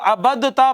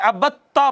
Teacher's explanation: دال کو تا میں ضم کیا تو تا ہو گئی مشدد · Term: ادغام متجانسین